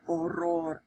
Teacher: We've got that R rolling tongue, or the rolling tongue R in there.